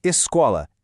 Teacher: Se cai na penúltima, como em escola, é paroxítona.